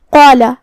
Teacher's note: قاف کی ادائیگی زبان کے جڑ اور تالو کے نرم حصے سے ہے. قاف حروف تفخیم میں سے بھی ہے تو ہمیں اسے بھاری آواز میں پڑھنا ہے جو کہ اس کے بعد مد الف ہے.